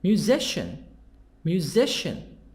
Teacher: the stress in the middle